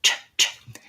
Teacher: The ch sound, I lift my tongue to the T, drop it to the SH, but the sound doesn't continue.